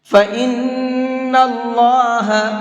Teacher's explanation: اس نون کے اندر غنہ کریں گے۔